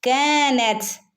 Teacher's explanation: കാഫിന്റെ കൂടെ അലിഫ് മദ് വന്നിട്ടുണ്ട് കുറച്ച് നീട്ടി കൊടുക്കണം